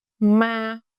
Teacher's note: In Northern Vietnamese, the first one, ngang, is a flat no-tone mark.